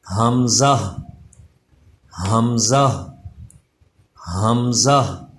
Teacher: حمزہ جو ہے اس کا مخرج بھی وہی ہے جو ہا کا مخرج ہے، یعنی حلق کے نیچے والے حصے سے